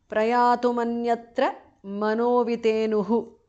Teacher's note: Manaha becomes mano because of sandhi.